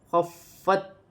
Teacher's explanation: فا مشدد ہے، فا کو خا کے ساتھ ملا کر پڑھا جائے گا